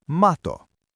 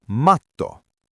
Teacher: Mato (worm) is a smooth slide. Matto (carpet) has a distinct stop.